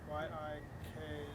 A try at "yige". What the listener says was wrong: No, it's still G because it's a, it should be this. It should be this with no space. Okay, it should be yige.